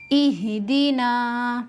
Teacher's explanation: नून को एक अलिफ के बराबर खींच कर पढ़ेंगे क्योंकि अलिफ से पहले वाले हर्फ पर जबर है, इसलिए यहाँ एक अलिफ के बराबर खींच कर पढ़ेंगे।